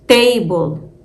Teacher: if table were in Arabic word we will pronounce the T more purely without that puff it would sound something like this table just a clear t · Just a clear T with no extra breath.